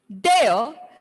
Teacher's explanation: the R sound of there is silent. So put the R sound in bracket.